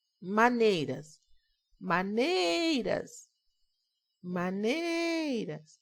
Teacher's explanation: Então, nei é a sílaba forte.